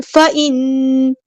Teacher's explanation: نون پہ غنہ زمانی ہو رہا ہے، الف کے برابر رکنا ہے